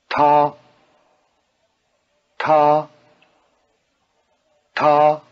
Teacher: notice the extra explosiveness of the tea